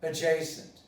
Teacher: Well, so the pronunciation is, with the stress, adjacent. You don't pronounce the J, you don't pronounce the D, because the J is stronger, so it assimilates the D.